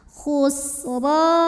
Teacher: Huruf ra dibunyikan secara tafkhim karena ra berbaris fathah. Maka cara bacanya ditebalkan. Khusra. Ra matabi'i zahiri karena ada alif sebelumnya baris fathah.